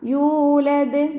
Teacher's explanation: യാൻ്റെ കൂടെ വാവ് മദ്ദുണ്ട്. അപ്പോൾ 2 കൗണ്ട് നീട്ടണം. യൂലദ്. നിർത്തുമ്പോൾ ദാലിന് സുക്കൂന് കൊടുക്കും.